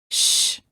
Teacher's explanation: the sides of the tongue are up against the upper teeth on the sides of the mouth and the air flows out through the middle of the tongue